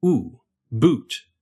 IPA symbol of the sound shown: ʊu